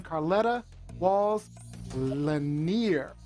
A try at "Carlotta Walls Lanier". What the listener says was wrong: Pronounce her name properly before Sunday. Carlotta Wall Lanier. You said Carletta.